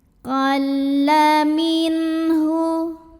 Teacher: Ada lam tasydid. Hati-hati tidak ada dengung, jadi ini cukup ditekan aja, jangan sampai ditahan.